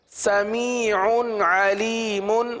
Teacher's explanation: سمیع علیم، کیونکہ تنوین کے بعد عین، عین حروف حلقی میں سے، لہذا اظہار کا قاعدہ ہوگا